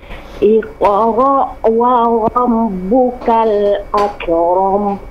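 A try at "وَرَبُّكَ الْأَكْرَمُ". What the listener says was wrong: Nah, jangan akram. Jadi tidak dipantulkan, tidak tapi ak. Nafasnya yang mengalir. Setelah suaranya terputus, nafasnya mengalir. Akram, tidak akram.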